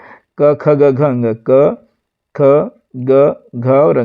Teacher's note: इसमें जो पहले दो अक्षर होते हैं आपके होते हैं अघोष और तीसरे चौथे और पांचवे अक्षर जो होते हैं वो होते हैं सघोष